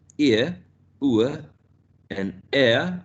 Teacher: the diphthongs ending in a schwa, like ear, ua, and air, are going to be considered centering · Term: centering diphthongs